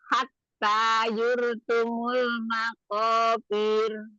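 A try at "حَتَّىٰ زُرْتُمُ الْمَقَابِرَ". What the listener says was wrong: Zur, bukan yur. Bukan ya, tapi zai. Hatta zurtumul maqabir.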